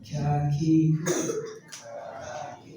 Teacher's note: kalau ka tipis tapi ada napas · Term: Hames